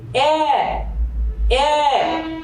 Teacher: যেমন আমরা যদি একে এ বলি এ এ, তাহলে আমাদের ওষ্ঠ বা ঠোঁট প্রসারিত হচ্ছে, আর যার কারণে এর নাম দিচ্ছি আমরা বিবৃত